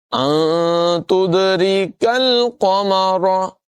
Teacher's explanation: پہلے والی را اور کاف باریک ہوگی، دوسرے والی قاف اور را دونوں پر پڑی جائے گی